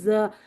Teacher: زا کیا ہے، یہ صفیریہ ہے، صفیریہ ہے تو مطلب یہ ہے کہ سیٹی آئے گی، ٹھیک ہے؟ تو سیٹی بھی آنی چاہیے اور زال سے فرق بھی ہونا چاہیے، تو زبان اوپر اور نیچے کے دانتوں کے درمیان میں بس آئے گی، لگے گی کہیں نہیں، ٹھیک ہے؟